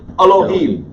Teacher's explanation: put that emphasis on the last syllable and say the first syllable fast